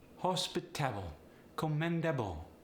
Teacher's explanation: The Polish accent is similar to the German accent and the West African accent in that you're often stressing every syllable. Though with a Polish accent, frequently you're emphasizing the second to the last syllable